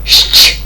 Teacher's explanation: тверді приголосні ш ч які стоять поряд записуються за допомогою букви ща і читається дуже швидко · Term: сполучення звуків шч